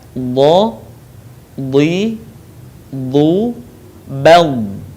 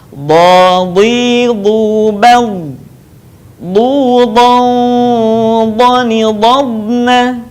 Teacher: Huruf ini keluar dengan menyentuhkan dua sisi lisan kita dengan geraham-geraham atas. Boleh kita sentuhkan dua sisi lidah dengan geraham-geraham atas, atau kita boleh menyentuhkan salah satu bagiannya. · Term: huruf dha